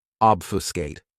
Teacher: This verb has 3 syllables, and the stress is on that first syllable